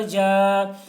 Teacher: الف سے پہلے زبر ہے، الف مدہ ہوا اس لیے الف مدہ کو ایک الف کے برابر کھینچ کر پڑھیں گے